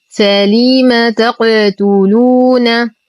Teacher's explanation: نقلقل القاف فهي ساكنة من حروف قطب